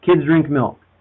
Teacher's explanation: three content words three stressed syllables